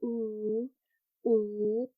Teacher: And then if you take a look at the U sound, right, it's described as high because the tongue is high in the mouth. So ooh, ooh, kind of like feel where your tongue is when you pronounce it, and then it's round because your lips are rounded.